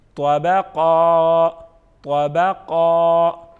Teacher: کتنا کھینچ کے پڑھیں گے؟ ایک الف کے برابر